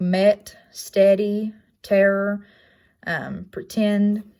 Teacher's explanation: It's going to make the eh sound. Description is it's in a low, mid, front, unrounded, and lax position. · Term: epsilon